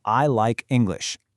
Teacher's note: Notice how the sentence finds a steady, confident downward rhythm at the end. That rhythm shows absolute certainty. · In I like English, we punch the stress on the main content words, like and English.